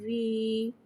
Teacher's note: یا ساکن سے پہلے زیر آ رہا ہے، یا مدہ ہو رہا ہے، لہذا یا مدہ کو ایک الف 2 حرکات کے برابر کھینچ کے پڑھیں گے، اور زیر کو نیچے گراتے ہوئے ادا کریں گے